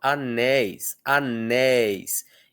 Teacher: Então o e forte, o i fraquinho e rápido. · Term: ditongo